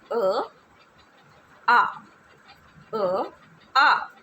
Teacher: जो अ है इसका भी उच्चारण स्थान कंठ से होता है। आ, अ, आ। आपकी जीभ बिल्कुल स्थिर है, नीचे पड़ी रहेगी, ठीक है। · आपकी जीभ बिल्कुल स्थिर है, नीचे पड़ी रहेगी, ठीक है। आपको जोर नहीं लगाना, वो निचले हिस्से से ही इस्तेमाल होगी, यानी कि जो जीभ है ये यहाँ रहेगी।